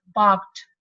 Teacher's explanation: the presence of voiceless sound, in this case ka, or any other voiceless sound, influences the sound coming after. Okay, so that sound is changed from voiced to voiceless. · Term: vocal change